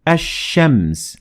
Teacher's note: notice how we dropped the lam in the word ashems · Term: the sun